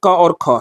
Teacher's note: प्रत्येक वर्ग के जो पहले 2 वर्ण हैं जैसे इसमें क और ख है, तो ये क्या हो जाएंगे सर, ये अघोष हो जाएंगे